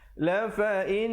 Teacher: La fa in, didengungkan di situ dua harakat.